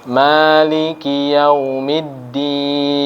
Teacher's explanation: mimnya panjang dua ketukan 2 harokat lalu huruf Dal juga ada tasydid itu berarti ditekan dan ditahan